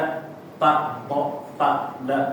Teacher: Jadi untuk ta da dia tempat keluarnya lebih tepatnya adalah pangkal gigi seri atas ya. Jadi tempat tumbuhnya gigi seri atas bukan di ujungnya.